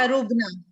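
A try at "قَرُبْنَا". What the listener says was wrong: लेकिन ये तो काफ है, आप काफ पढ़नी है, आप पढ़नी है आइसक्रीम, है ना, आप काफ पढ़नी, काफ, ये है काफ जी।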